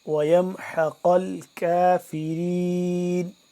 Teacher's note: یہ والا قاف موٹا پر کر کے پڑھیں گے نقطے والا، جبکہ یہ کش والا کاف باریک پڑھیں گے